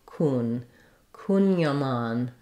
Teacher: So in this word, we have the main stress on the mon syllable and letter A says ah, so trying mon. And then we have some secondary stress on this first syllable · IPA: /kuŋjɑˈmɑn/